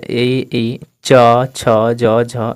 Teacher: जिसको बोलने पर जीभ हमारी ऊपर सट जाती है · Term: तालुव्य वर्ण